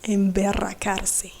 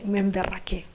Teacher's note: you do that by putting the tip of your tongue at the bottom part of your teeth and you let it vibrate